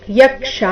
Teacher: ಯ ಮೇಲೆ ಆಘಾತ, ಕ್ಷಾ ದೀರ್ಘ